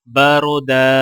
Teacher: اب یہاں پر را سے پہلے زبر آ رہا ہے تو لہٰذا را کو موٹا پڑھا جائے گا اور دال کے اوپر دو زبر ہیں اور الف ساکن اس کے آگے ہے تو لہٰذا وقف کرتے وقت دال کو الف کے ساتھ ملائیں گے اور ایک الف کے برابر کھینچیں گے